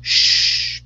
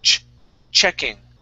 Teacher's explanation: So the difference here, you're saying a sh sound, like sh, be quiet. The difference between the SH and the CH is that the airflow, with this sound here, the CH, ch, okay, we stop the airflow. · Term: CH sound